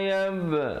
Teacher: qalqalah sughra di situ, pepeskan, jangan bulatkan